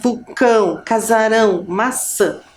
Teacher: É um som que sai como se fosse pelo nosso nariz. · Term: som nasal